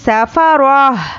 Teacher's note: جب ہم اس پر وقف کریں گے تو یہ ہائے ساکنہ بن جاتی ہے, تو پڑھنے میں لاسٹ میں ہا کی آواز آنی چاہیے.